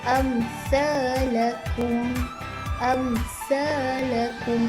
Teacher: huruf mim tu dibaca dengan jelas tanpa dengung